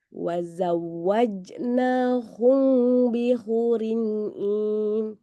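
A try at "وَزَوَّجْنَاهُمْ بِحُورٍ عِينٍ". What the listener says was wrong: Pertama-tama dia dapat ya, kemudian udah agak lama kembali merapat dia ya. Harusnya dia jangan merapat. Wazawwajnahum bihurin ain sampai habis begitu dia renggang.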